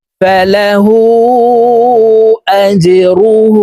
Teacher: হার উপরে উল্টা পেশ ঠোঁট গোল করে এক আলিফ টেনে পড়বো